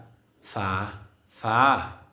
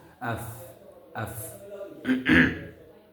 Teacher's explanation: উপরের সানাউলিয়া নামক দুই দাঁতের অগ্রভাগ এবং তাহার বরাবর নিচে টুটের ভিতরের অংশ অথবা বীজ অংশ, এই মাখরাজ হইতে ফা উচ্চারিত হয়